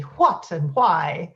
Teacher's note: the Irish speakers will all have this aspiration in what and why